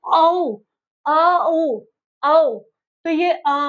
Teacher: तो जब हम औ बोलते हैं तो सबसे पहले हमारा क्या निकलता है? अ निकलता है। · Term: संयुक्त स्वर